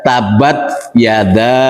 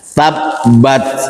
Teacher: Yang pertama kesalahannya adalah tidak mentasdidkan ba, ya. Harusnya dibaca tabbat, tapi dia baca tabat yada, ya, tabat yada.